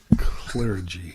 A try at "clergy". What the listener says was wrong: I noticed that. He gave it an extra syllable. Clergy. But he said clergy, like Claire.